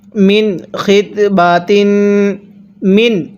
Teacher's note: তাহলে আরাদতুম বিহি, আমার সাথে মিলিয়ে পড়ুন, ওয়ালা জুনাহা আলাইকুম ফিমা আরাদতুম বিহি, হিয়ের মধ্যে টান দিব, মিন খিতবাতিন, মিন, এই নুন সাকিনটা স্পষ্ট করে পড়ব, কারণ এখানে এই নুন সাকিনের পরে খটি হলো ইজহারে হরফ, আর নুন সাকিনের পরে ইজহারে হরফ থাকলে নুন সাকিনগুলো স্পষ্ট করে পড়তে হয়।